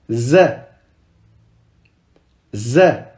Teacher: c'est un Z normal. On ne met pas la langue entre les dents.